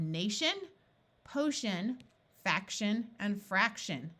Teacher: What that means is that rather than having an IO or EO sound here or an ES sound here, it sounds more like ul. The TI and the CI in these suffixes sound like sh.